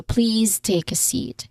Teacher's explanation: we usually say please with a buzzing sound with a voiced z sound